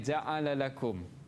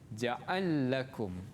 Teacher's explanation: Tapi untuk As-Susi dibaca dengan al-idgham. Masukkan kepada lam yang kedua. Jadi ja'ala lakum dibaca Susi sebagai ja'al lakum.